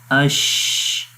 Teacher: آواز بھی جاری ہے اور سانس بھی جاری ہے۔ استفال، شین کو باریک پڑھیں گے، استفال کا مطلب باریک، اس وجہ سے اس کو پڑھیں گے شین، باریک ہوتا ہے۔ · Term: رخاوت